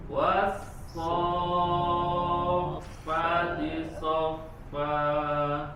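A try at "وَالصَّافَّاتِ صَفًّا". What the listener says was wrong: Fa-nya belum panjang, tambah lagi panjang. Wassofati soffa.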